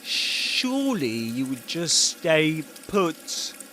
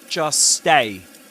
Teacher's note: We've just said that we don't say, he doesn't say, just stay, but just stay. And we call that simplification. Dropping the middle consonant, the T here.